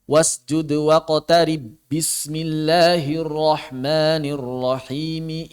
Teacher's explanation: itu selalu mengikuti cara baca apabila diwasal bukan apabila diwakaf karena apabila kita mewasalkan bacaan dari akhir alalaq menuju awal alqadar itu dengan Idgham pada ba